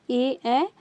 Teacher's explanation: तालु और कंठ से जो उच्चारित होने वाला है वो है आपका ए